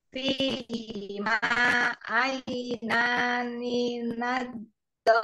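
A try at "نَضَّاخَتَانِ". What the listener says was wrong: Ya, bagus. Tinggal do-nya dua harokat. Nado.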